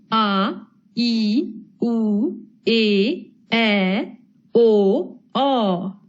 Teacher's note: इनके उच्चारण में ह्रस्व स्वर से दुगना समय लगता है। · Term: दीर्घ